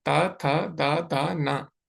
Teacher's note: दंत में पीछे भाग को जीवा स्पर्श करती है। तो आप बोलेंगे तो आपकी जीभ ऊपर वाले दांतों के पीछे रहेगी। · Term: दंत्य